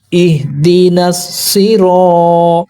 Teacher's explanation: अलिफ से पहले ज़बर है, अलिफ रूफ़ मद्दा है, ज़बर को 2 हरकत के बराबर खींचेंगे।